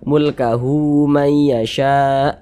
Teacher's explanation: Tapi kalau kita sambung, kita wasolkan ya, baru hu-nya kita baca panjang. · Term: Mad silah qasirah